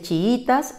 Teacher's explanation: su pronunciación natural está en la penúltima sílaba